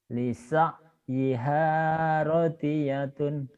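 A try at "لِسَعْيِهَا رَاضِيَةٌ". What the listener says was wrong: Ada yang panjang loh Pak di situ. Coba lihat baik-baik. bukan, Bapak tadi salahnya di ro-nya. Ro-nya Bapak pendek. Rodiyatun, di ro-nya pendek.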